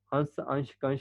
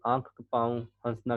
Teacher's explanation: हंस अंश कंश का उच्चारण आप लोग का नाक से हो रहा है और आंख पांव हंसना का उच्चारण नाक और मुख दोनों से हो रहा है